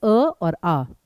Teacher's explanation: कंठ जो सीधे गले से आते हैं वो हैं केवल अ और आ। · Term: कंठे स्वर